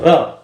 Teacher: जब हम र का उच्चारण करते हैं तो हमारी जो जीभ है वह बिल्कुल लुंठित यानी कि बिल्कुल लड़खड़ाते हुई आगे बढ़ती है तो र र कहते हैं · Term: लुंठित व्यंजन